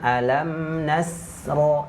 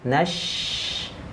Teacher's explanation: huruf shin tidak boleh berdesis di sini. Jangan alam nasro, tidak.